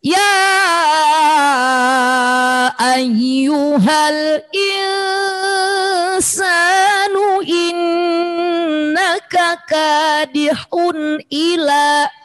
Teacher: Di qasar hun, tanwin ketemu alif, idhar halki. Tanwin dibaca an, in, di depannya ada alif, jangan didengungkan, satu ketukan.